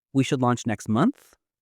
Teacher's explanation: A rising intonation at the end of a statement, like, "We should launch next month," can make it sound uncertain or questioning, even though the words are confident.